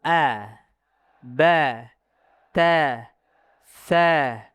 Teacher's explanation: Fathah Arabiyah dia fathah mutawasithah kata Abu Amr Ad-Dani. Ya, tidak boleh naik o, tidak boleh juga e, b, t, c, enggak boleh.